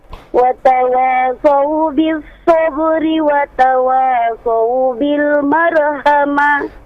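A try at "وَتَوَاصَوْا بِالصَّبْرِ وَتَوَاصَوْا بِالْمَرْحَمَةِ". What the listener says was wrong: Baik, untuk huruf ra-nya masih belum terdengar tebal ya. Marhamah, huruf-huruf tebalnya ra, ta, sa ya. Watawasau bis sabri watawasau bil marhamah. Baik, bukan mar.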